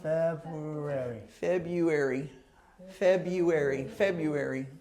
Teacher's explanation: again it has four syllables February says four syllables but the r is silent